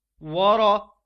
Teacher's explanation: را کو ہم موٹا پڑھیں گے کیونکہ را کے اوپر زبر ہے۔ را کے اوپر زبر ہو یا پیش ہو تو را کو موٹا پڑھتے ہیں، جیسے ہم نے یہاں را کو موٹا پڑھا تھا، اسی طرح یہاں پر ہم را کو موٹا پڑھیں گے۔